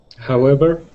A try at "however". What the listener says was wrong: You're using a small B sound, all right? So instead of saying however, we want to say however, like you're pronouncing an F. However.